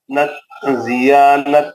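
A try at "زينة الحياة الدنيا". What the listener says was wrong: زینت الحیات الدنیا، دوبارہ پڑھیے۔ ضیا نہیں ہے، ضیا نہیں ہے سر، ضیا نہیں ہے، غور سے دیکھ لیجیے، زینت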